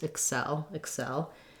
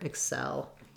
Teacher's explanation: across both syllables excel excel importantly i just want to be short and unstressed on that first vowel first syllable and hold the second syllable longer